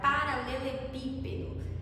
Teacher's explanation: Tanto que a palavra paralelepípedo, né, o do é oxi, seria, se fosse a sílaba tônica, o do seria oxítona, o P, paralelepípedo, se fosse o P, antepenúltima, seria paroxítona. Só que a mais forte dessa palavra é o pi, então é proparoxítona, certo? Outra coisa que vocês precisam lembrar é a classificação das palavras monossílabas.